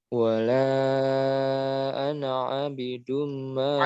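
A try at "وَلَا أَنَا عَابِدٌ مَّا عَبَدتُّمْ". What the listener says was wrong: A-nya panjang. A-nya panjang. Wala ana 'abidum ma 'abadtum.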